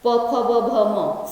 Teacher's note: प फ ब भ म सब में ओठ सटता है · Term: ओष्ठ्य